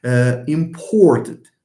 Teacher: The nucleus of the syllable, which is the vowel O in important, for example, is made clearer and is made heavy. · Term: stress